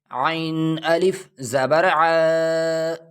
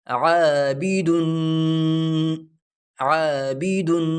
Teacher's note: عین حلق سے نکالیں گے تھوڑا زور لگا کے